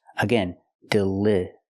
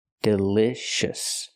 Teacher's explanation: We cannot use the long E sound like green beans. We use the short I sound like this is.